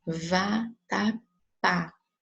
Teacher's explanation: É a última sílaba tônica. Ela foi acentuada, termina em A. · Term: oxítona